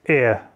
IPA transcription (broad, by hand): ɛə